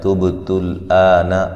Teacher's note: با پہ قلقلہ کریں گے، ہلا کے پڑھیں گے